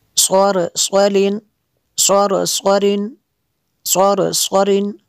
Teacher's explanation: را کو پر کرنا ہے اور صاد کو بھی پر کرنا ہے